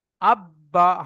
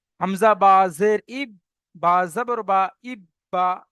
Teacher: এই তাজদিদ থাকার কারণে এই অক্ষরটি দুবার উচ্চারণ করে পড়তে হচ্ছে একবার আগের অক্ষরের সাথে মিলিয়ে একবার নিজের অক্ষরের সাথে